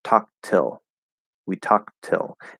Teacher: we're going to stop that first T and then say the second T